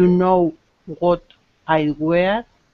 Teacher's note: I like how you made your voice go up at the end, because it's a question here.